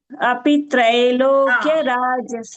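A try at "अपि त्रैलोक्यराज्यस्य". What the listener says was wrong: You missed the ditom again. It is trai is coming, no? Trai. So don't miss the ditom, Bhagini.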